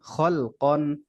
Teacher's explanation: খ মোটা, কফ মোটা, কিন্তু লামটা কিন্তু পাতলা উচ্চারণ।